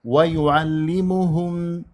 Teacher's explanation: من غير سحب ضمه الهاء الى الميم